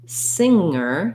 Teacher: Singer has no G sound in it. It just has the NG sound.